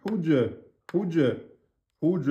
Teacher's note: Huj, c'est un rebond. Huj, ça monte tout de suite. Huj, huj, huj, ra, emphatique.